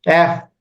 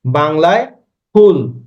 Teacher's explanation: আমি যখন এফ উচ্চারণ করব, এফ, তখন খেয়াল করেন আমার এই বাতাস দাঁতের ফাঁক দিয়ে বের হচ্ছে, কিন্তু আমি যখন বাংলা ফ বলবো, তখন আমার ফটা কি হবে, ঠোঁটের স্পর্শ লাভ করবে। ইংরেজি এফ উচ্চারণে ঠোঁটের স্পর্শ লাভ করে না, তাই আমি এই ফুল আর ফুল এক না, আমাকে ইংরেজি ফুল, বাংলায় ফুল।